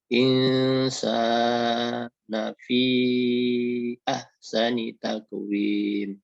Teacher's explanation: Jadi dibaca samar-samar. Penuturan bunyi huruf nun matinya itu dibaca samar. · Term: ikhfa